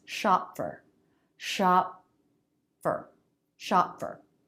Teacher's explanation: my lips come together for the p but they don't release there's just a little lift in sound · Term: stop consonant, No release